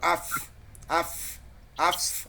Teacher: মাখরাজটা নিচের ঠোঁটের পেট সামনের উপরের দুই দাঁতের আগার সঙ্গে লাগিয়ে লাগে, ফা, উচ্চারিত হয়।